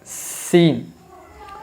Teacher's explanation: ناظرین، سین کو صحیح ادا کرنے کے لیے ہمارے دونوں جو دانت ہیں وہ دانت بند ہو جانا چاہیے۔ جب ہمارے دانت بند ہو جاتے ہیں تو ہم سیٹی جس طرح مارتے ہیں اسی طرح ہم سین کی آواز نکالیں، سین، تو سین خود بخود صحیح ادا ہو جائے گا۔